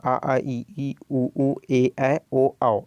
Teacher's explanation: इसमें जो है वायु केवल मुंह से ही निकलता है, नाक से नहीं निकलता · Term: निर्नुनासिक स्वर